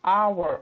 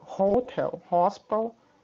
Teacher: Porque nesse caso aqui, hotel e hospital, o H ele é pronunciado.